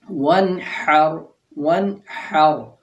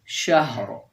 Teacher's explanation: یہ ہا کی آواز پیٹ کے اندر یا سینے کے اندر سے حلق کا جو آخری حصہ ہے وہاں سے نکلتی ہے، یہ بغیر ٹکرائے نکلتی ہے۔